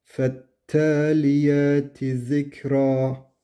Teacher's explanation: Fette T harfini uzatıyoruz. Baştaki F'yi uzatmıyoruz.